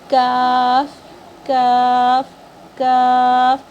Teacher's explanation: زبان کا درمیان والا حصہ اور اوپر کے تالو کا سخت والے حصے سے یہ ادا ہوتی ہے